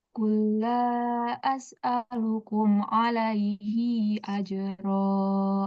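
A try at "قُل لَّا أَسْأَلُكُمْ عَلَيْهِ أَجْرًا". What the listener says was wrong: Iya, nggak boleh panjang. Alaihi ajra.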